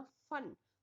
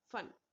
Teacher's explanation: फन में जो हमारे होठों की शेप है वो गोलाकार हो जाती है, ठीक है। तो उसमें हमारे जो होठ होंगे वो एक गोलाकार आकृति में होंगे, यानी फन, उसमें वो टच नहीं होते एक दूसरे को, बल्कि गोल हो जाते हैं, फन।